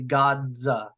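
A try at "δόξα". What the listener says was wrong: Where do you get the G sound? Yeah, Dadza. Dadza. Dadza. Excuse me for the pronunciation on the Omicron. Dadza.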